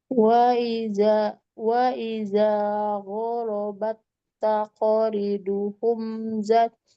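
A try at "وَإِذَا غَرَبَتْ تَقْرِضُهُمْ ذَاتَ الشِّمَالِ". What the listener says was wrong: Zat kan zanya punya alif, berarti zanya dibaca panjang. Zatashi. Coba perhatikan pengucapan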